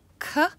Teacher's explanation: of your tongue is pressing against the roof of your mouth when you're making sound for K cook you're actually as you press you're actually blowing out air